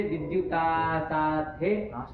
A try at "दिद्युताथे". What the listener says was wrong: सात आस कहाँ आ जाएगा? विद्युत में तो हाथे ही मिला ना। रटनेस थोड़ी ना होगा। वो प्रत्यय ध्यान में रहेगा तो गलत नहीं निकलेगा। गलत मुंह से निकल रहा है इसका मतलब आपको प्रक्रिया नहीं पता है तभी तो।